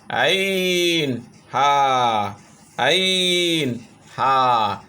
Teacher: গলার মধ্যখান থেকে আইন হা